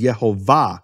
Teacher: The emphasis of the word is in the final syllable. · You have this relationship between shva and kamatz, between e and a, based on the emphasis of the syllable.